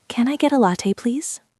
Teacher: Now, let's add the please at the end. In English, we often put please at the end of the request and the intonation goes up slightly.